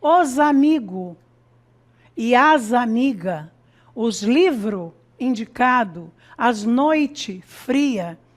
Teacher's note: A omissão do S, como marca de um plural de substantivo, e adjetivos.